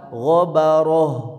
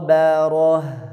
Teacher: G tebal, ba tipis, ro tebal, ha ya ta marbutah ketika wakaf jadi ha.